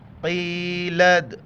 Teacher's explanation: قیلد قاف یا زیر قی، بڑی قاف ہے، قی لد، لد جھٹکے کے ساتھ قلقلہ ہے